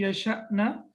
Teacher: As we know that when Hamza is sakin, it's like a small glottal stop.